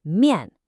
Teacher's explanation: 面, is a fourth tone. It's a sharp drop